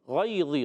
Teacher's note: غین ادا ہوتا ہے حلق کے درمیان والے حصے سے